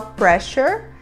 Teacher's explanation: o ss nessa palavra ganha um som de x que a gente vai falar Pressure uma palavra terminada com a